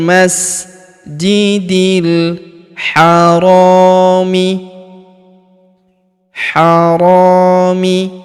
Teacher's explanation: Huruf ro kita panjangkan dua harakat karena terdapat alif di depannya.